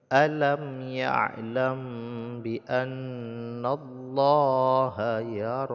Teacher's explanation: ya'lam biannallaha yaro mim sukun bertemu dengan ba diikhfan ya Ikfa Ikhfa Syafawi jadi didengungkan juga kadar dua harakat